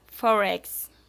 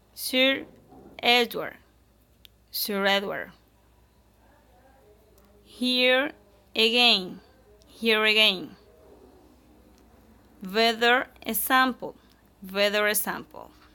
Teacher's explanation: if we pronounce them together, we say an R sound between the words because it makes the word easier to pronounce quickly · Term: linking R